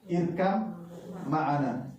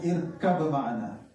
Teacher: Baknya lebur total. Qalqalahnya hilang. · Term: idgham shaghir